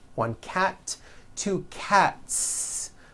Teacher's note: Again, the S ending is unvoiced. · Cat ends with an unvoiced T.